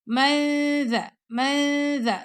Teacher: ذال کے مخرج کے پاس نون کی آواز کو چھپائیں گے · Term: اخفا